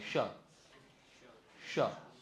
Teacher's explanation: ષ બોલોને ત્યારે જીભ અંદરથી વળવી જોઈએ ભૂગડી ટાઈપ બરાબર ષટકોણનો શ બોલો એટલે જીભ એકદમ સ્થિર થવી